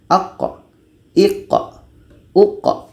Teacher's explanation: ada pantulan bukan berangin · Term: qqalah